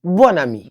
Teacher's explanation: C'est la liaison obligatoire entre un adjectif et le mot qui suit commençant par une voyelle ou un H muet. Ce qui fait que le N final redevient sonore.